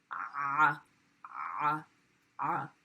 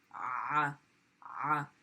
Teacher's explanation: There's a roll that's happening. Ah, ah. And that roll is from the contraction of your vocal cords. You obviously don't want to choke yourself, but there's a slight contraction as that sound is moving. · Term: the ayn